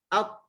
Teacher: Ada bila nampak syiddah jugalah. Bila dia kena tempat kena makhraj dia tu, dia berlaku syiddah, tahan suara. Dan kita lepas, dia terus lantun lah. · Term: qalqalah